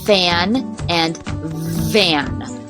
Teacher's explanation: the next kind of sound has as a labia dental and that's where you use your lower lip and your upper teeth so we only have a fricative like this like fan and fan voiceless and voiced the same